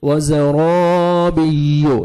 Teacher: रॉ के ऊपर ज़बर है रॉ को मोटा करना है और अलिफ मद है 1 सेकंड रॉ को खींचना भी है